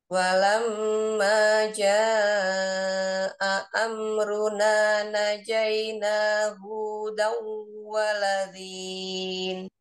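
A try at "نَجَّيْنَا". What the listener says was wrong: Sudah bagus, tinggal najaina. Ada ini ada tasjid ya. seperti dua harokat. Walamma jaa'a amruna najaina. Najah, jangan naik ya nadanya. Najaina.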